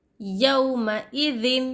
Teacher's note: تو یہاں پر ہم نہ ہی غنہ کریں گے نہ ہی اخفا کریں گے بلکہ ظاہر کر کے پڑھیں گے تنوین کو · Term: اظہار